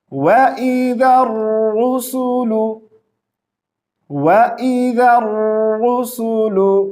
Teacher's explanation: ذال کو را کے ساتھ ملائیں گے